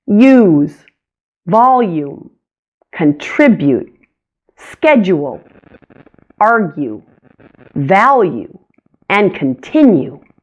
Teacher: Long U also stretches and glides.